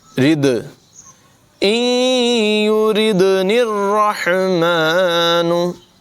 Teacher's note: नून को रा से मिला देंगे, रा की अदायगी पुर होगी, हा की आवाज़ भी नुमायाँ करेंगे।